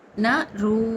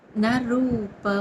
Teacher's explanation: న రూ దీర్ఘాక్షరం ప హ్రస్వంగా పలకాలి